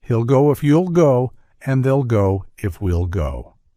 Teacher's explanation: and they'll go if we'll go in this version notice how the sound of will is abbreviated to just the L followed by the UL sound let's go through various contractions that